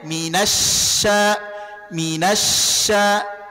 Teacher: orang yang membaca syin dengan menggerakkan kedua bibir maka bunyinya otomatis menjadi tebal